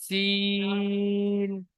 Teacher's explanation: সিন pressure কুকারের সিটির মতো পাতলা আওয়াজে হবে সিন